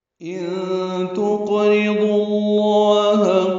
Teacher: نون ساکن کے بعد تا آنے کی وجہ سے اخفا ہے، نون کی آواز چھپائیں گے ، تا باریک پڑھیں گے، قوف ساکن ہے اس پہ قلقلہ